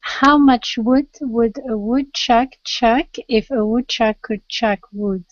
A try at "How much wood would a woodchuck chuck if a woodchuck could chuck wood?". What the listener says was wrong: Oh, very good.